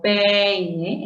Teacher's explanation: el acento está en la vocal abierta, E